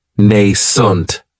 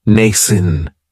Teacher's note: this word has 2 syllables, and the stress is on that first syllable. It has the long A sound, nascent.